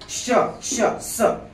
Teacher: हे वर्ण उच्चारत असताना मुखविवरामध्ये काय होते? घर्षण होते आणि घर्षणामुळे उष्णता निर्माण होते, म्हणून यांना उष्मे किंवा घर्षक म्हणायचं.